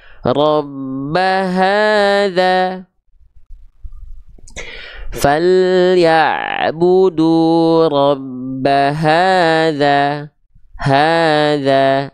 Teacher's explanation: Dibaca juga sama dasarnya pakai vokal A tapi vokal a-nya dibaca kadar panjangnya dua harakat nama hukum tajwidnya Mad Thobi'i ya ahah nama hukum tajwidnya Mad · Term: matobi'i